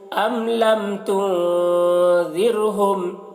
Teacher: نون میں یہاں پر اخفا بھی ہو رہا ہے اور را کو باریک پڑھیں گے